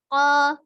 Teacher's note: Kemudian ko itu termasuk huruf yang tebal. Jadi pengucapan o-nya gitu kan bukan dibentuk dari bibir yang memajukan dua bibir ya, tetapi dengan mengangkat pangkal lidahnya.